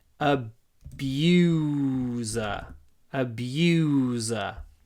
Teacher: The word abuser comes from the verb, so it has the long oo in it.